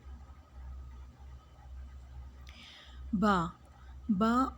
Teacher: اوپر والے ہونٹ اور نیچے والے ہونٹ کے گیلے حصے سے با کو ادا کیا جاتا ہے